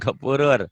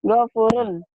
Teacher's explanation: jelas. Bunyi nun mati atau tanwinnya jelas. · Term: idhar